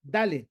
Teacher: Poniendo la lengua por detrás de los dientes de la mandíbula superior. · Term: dentales